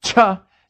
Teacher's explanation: the next sound is an aspirated ch